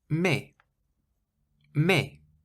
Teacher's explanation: you pronounce it as though there isn't an S on the end at all